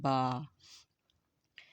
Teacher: joining at them separately both lips، the both lips are completely closed then open suddenly to release the sound ba